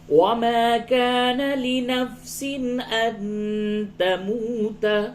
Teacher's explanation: تنوین کے بعد حمزہ ہے، اس جگہ پہ اظہار ہوگا